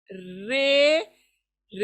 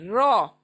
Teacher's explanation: हमेशा ये जो है रे, रे ऐसा कभी नहीं पढ़ना है, इसको रो पुर पढ़ना है, गोल मुंह से पढ़ना है रो